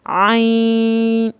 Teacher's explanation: وہ نون کی آواز آپ کی ناک کی بانس میں جائے گی. تو یہ جب آئین صاد، یعنی آپ آئین ادا کر رہے ہیں، نون کی آواز آپ کی ناک کی بانس میں جا رہی ہے، اس کے فوراً بعد آپ نے صاد اٹھانا ہے اور صاد کو پھر آپ نے 3 الف کے برابر اس کی مد کو لمبا کر کے پڑھنا ہے. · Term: غنہ